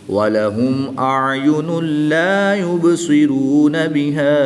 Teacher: دو پیش کی تنوین کے بعد پھر لام حروف یرملون میں سے آ گیا تو یہاں پر ادغام بلا غنہ ہوگا، یعنی غنہ نہیں کریں گے